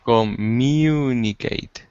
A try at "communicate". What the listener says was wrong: There you go. That's it, because you said communicate.